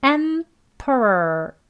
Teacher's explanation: 이 앞에 보시면 강세가 앞에 있습니다. 그리고 뒤에 오는 P 뒤에 오는 모음 소리 강세 없어요.